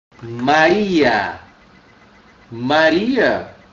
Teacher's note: onde é que tá minha vogal tônica da palavra inteira tá no i